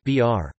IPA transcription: br